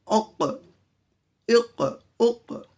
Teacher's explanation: جی یہ ہے زبان کی جڑ اس کے اوپر کے تالو سے. جی زبان کی جڑ اوپر کے تالو سے قاف ادا ہوتا ہے